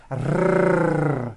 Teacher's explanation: Now, in some languages like Arabic and Spanish, the R is produced by bringing the tongue forward in the front of the mouth, behind the upper teeth, and rolling or trilling the tongue.